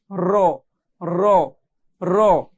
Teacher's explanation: জিহ্বার আগার পিঠ তার বরাবর উপরে তালুর সঙ্গে লাগিয়ে পড়তে হয় র, মানে একদম জিহ্বার আগা না, একটু ভিতরের দিকে, মানে পিঠ টাইপের যে জায়গাটি, এই জায়গাটি আমাদের উপরে তালুর সঙ্গে লাগিয়ে পড়তে হবে র র র।